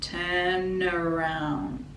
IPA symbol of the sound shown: ə